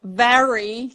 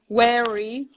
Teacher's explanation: So instead of very, you can hear wary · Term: W and V